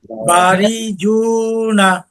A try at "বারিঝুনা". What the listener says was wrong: হ্যাঁ, রিটা আরেকটু তাড়াতাড়ি, বারিঝুনা। না, রি এই টানটুকু হবে না, টানটুকু দেওয়া যাবে না।